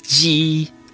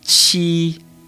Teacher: But you do not use your vocal cords like with the letter J.